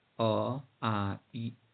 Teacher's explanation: उच्चारण करते समय होंठ सामान्य रहते हैं, कोई विशेष गोलाई नहीं बनती। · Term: अवृत्ताकार स्वर